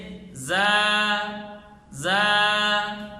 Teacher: تو صفت رخوت کا معنی نرمی ہے، تو حرف کو نرم پڑھیں گے، لیکن سیٹی صفت سفید کی وجہ سے ہم ادا کریں گے، تو زا کو نرم کر کے سیٹی کی آواز نکال کر پڑھیں گے، آخر میں حمزہ اور ہا کی آواز بھی نہیں نکالیں گے، اور ایک الف سے زائد لمبا نہیں کریں گے، جیسے زا زا، یہ اس کی صحیح ادا ہے۔